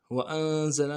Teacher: وأنزل میں حمزہ نون، یعنی حمزہ کو نون ساکن سے ملانا ہے اور غنہ کرنا ہے